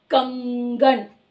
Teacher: क वर्ग का उच्चारण स्थान कंठ होता है, तो इस अनुस्वार की साउंड भी कंठ से आ रही है, कंगन, है ना, कंठ से आ रही है।